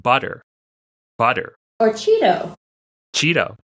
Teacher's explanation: this tap it's very light and it's very quick in a way that a d is not